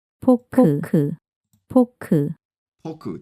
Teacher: there's no like F sound very well in Korean